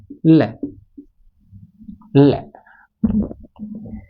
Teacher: जिनके उच्चारण में जीवा मसूड़ों को छूती है और हवा का प्रमुख वेग जीवा के आसपास या अगल बगल से निकल जाता है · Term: पार्श्विक व्यंजन